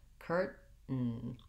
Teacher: That would sound like curran, curran. So I have to stop the air with my tongue or further back in my mouth to mark that T sound. Curtain. The easiest way to get that stop T is to feel it by making the T with your tongue.